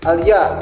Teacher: bunyi langit-langit tengah sedang bersuara tipis